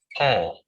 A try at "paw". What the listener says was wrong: Paw. Paw, not pool. Paw.